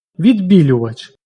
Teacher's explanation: Кріт «к» не зубний, отже він не пом'якшується. Відбілювач «ди» зубний, але «б» губний, пом'якшення не відбувається.